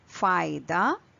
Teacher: when you say f you can see breath of air, puff of air releasing out. So that is the difference between P and F because F is the aspirated version of P. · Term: aspirated version of pa